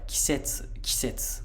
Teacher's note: initial high pitch, but it's kind of hard to hear that because the first beat is unvoiced